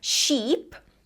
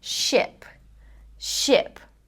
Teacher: So, instead of saying sheep, think about relaxing your tongue, ship.